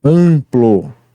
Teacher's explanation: Impor, o IN representa um único som, o som da vogal nasal IN. Amplo, o AN representa um único som, o som da vogal nasal AN